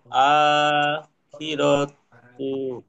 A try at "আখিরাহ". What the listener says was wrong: তু বলবেন না, গোলতা, এটা গোলতা, গোলতা কি ওয়াকফ করার সময় গোল হাতে পড়তে হয়। ওয়ালাল আখিরাহ।